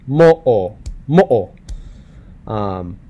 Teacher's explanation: Mo'o, mo'o, not mo, mo'o. There's a literal pause in between vowels. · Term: okina